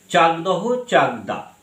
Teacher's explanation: এই যে অঘোষ ধ্বনি ক, এই যে ক, এইটা কি হয়েছে? ক পরিবর্তিত হয়ে ঘোষ ধ্বনি গয়ে পরিবর্তিত হয়েছে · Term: ঘোষী ভবনের প্রক্রিয়া